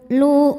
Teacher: Hamzah punya sifat syiddah dari segi suara, jadi ketika ditekan suaranya tertahan.